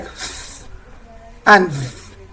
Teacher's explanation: On the place of articulation still, we also have the sounds that are produced with the lower lip and the upper teeth. We refer to these ones as the labiodental sounds.